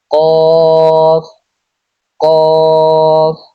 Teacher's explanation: জিহ্বার গোড়া তার বরাবর উপরে তালুর সঙ্গে লাগিয়ে উচ্চারিত হয় কফ